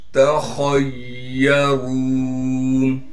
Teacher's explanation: तखय्यरून ता को बारीक करके साफ करके पढ़ेंगे। खा को मोटा करके पढ़ेंगे इसलिए कि खा मोटे हरूफ में से है